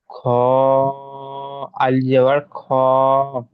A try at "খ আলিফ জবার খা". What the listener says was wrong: আলিফটা উচ্চারণ করেন ভালো করে